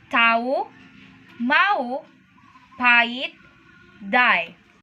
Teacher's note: In the medial position, by two different vowels, the H is not usually pronounced.